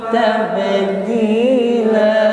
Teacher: La di sini harokatnya tanwin, sebenarnya lan, tapi karena waqaf di akhir ayat maka fathah tanwin dibaca fathah biasa, mad iwad namanya. Tabdila, panjangnya cukup satu alif atau satu kali ayun, tidak boleh lebih.